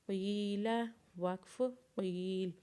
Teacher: قاف کو جب یا کے ساتھ ملائیں گے تو اسے ایک الف کے برابر کھینچیں گے اور لام کے اوپر زبر پڑھیں گے۔